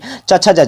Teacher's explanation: च वर्ग का उच्चारण स्थान क्या हो जाएगा तालू हो जाएगा